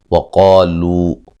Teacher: قاف کو موٹا ادا کریں گے، الف مدہ ہے، لو و مدہ ہے